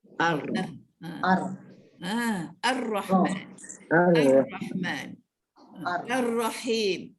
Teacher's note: Keadaan hujung lidah dalam keadaan bergetar ketika menyebutnya. Hujung lidah aja, janganlah sampai ke pangkal lidah pun nak digetarkan.